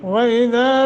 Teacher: دال کا مخرج صحیح ادا کرنا ہے، اور آگے الف ہے، 1 سیکنڈ کی مد کریں گے